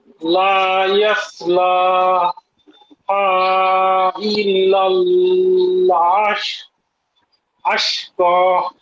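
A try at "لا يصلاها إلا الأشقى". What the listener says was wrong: এই যে ইল্লাল, এখানে একটু টান হয়ে গেছে, এখানে জজম, ইল্লা টান হবে না। ইল্লাল আশকা। আর হচ্ছে লা, এ সদা একটু জি, আর এই যে সদা একটু সুন্দর উচ্চারণ হবে। লা ইয়াস লা।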